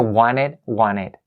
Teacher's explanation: the T sound here is less important than the N sound for native speakers. That's why they tend to kind of leave the T sound out.